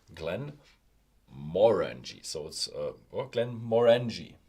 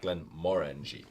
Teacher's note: It's actually a Gaelic name, so pronounced on the second syllable